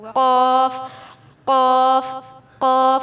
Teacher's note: یہ جہاں سے زبان ٹچ ہوئی، یہ جو اوپر والی جو ہے، یہ جو سارا جو ہے یہ تالو کا نرم حصہ کہلاتا ہے، ٹھیک ہے۔ زبان کی جڑ اوپر تالو کے نرم حصے سے لگے گی تو قاف کا مخرج ادا ہوگا